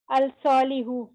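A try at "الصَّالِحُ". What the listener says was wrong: तो ये सालिहुन है, इसके साथ अस-सालिहु पढ़ेंगे, अल नहीं पढ़ेंगे, क्योंकि स्वाद के ऊपर शद है, तो हमने अल को नहीं पढ़ना, इसमें सिर्फ अस-सालिहु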